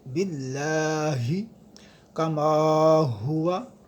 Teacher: تو میم کے بعد الف ہے، اس کو ہم کھینچیں گے، لمبا کریں گے ایک الف کی مقدار، اسے الف مدہ بھی کہتے ہیں۔ · اس کی وجہ یہ ہے کہ اللہ کے لام سے پہلے جب زیر آ جائے تو یہ باریک ہوتا ہے۔ اس کے بعد ہا ہے جو انتہائی حلق سے ادا ہوگی